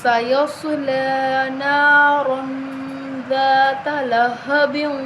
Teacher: دال کے آگے الف ہے تو الف مدہ، تو ہم اس کو ایک الف کے برابر لمبا کریں گے